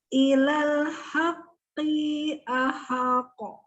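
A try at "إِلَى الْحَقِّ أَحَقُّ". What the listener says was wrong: Haqqi masih kepanjangan. Ki-nya. Ha-nya jangan dipanjangkan. Ahaqqa.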